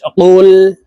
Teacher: কফের উচ্চারণ জিহ্বার গোড়া তার বরাবর উপরের তালুর সঙ্গে লাগাইয়া উচ্চারণ করতে হবে